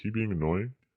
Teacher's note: notice too that the stress is usually pretty heavy on the last word